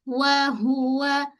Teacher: Aa kat sini semua tiga-tiga huruf kena muncung. Okey untuk wau yang muncung ha tu baris hadapan kan so mesti kena muncung juga